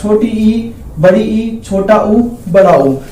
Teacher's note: जब बोलते समय मुंह लगभग बंद रहे, वो संवर्त स्वर कहलाएगा। तो 4 स्वर ऐसे हैं जब हमारा मुंह बंद रहेगा, छोटी ई, बड़ी ई, छोटा ऊ, बड़ा ऊ।